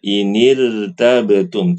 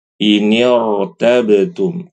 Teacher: Hamzah wasal tu Alif ada tanda ee khusus di atasnya nah Walaupun dia berharakat kasrah huruf sebelumnya tetap rnya dibaca tebal